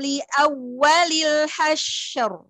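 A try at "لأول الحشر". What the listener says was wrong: Panjangan sin ya, hasyr.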